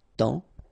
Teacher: And then temps, okay, so in that case, it's only the nasal here that you will hear, temps, okay, because the P is not pronounced and the S is not pronounced